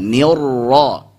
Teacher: Alirkan huruf ra-nya sedikit dan tebalkan. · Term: sifat takrir